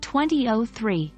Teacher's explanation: but when we're talking about the first decade of a century we usually say oh instead of zero and stress the O and the last digit